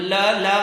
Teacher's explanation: तो lateral sound ल, बाकी जीभ जो है, बाकी हिस्सा नीचे रहेगा और tip of the tongue raise होगी।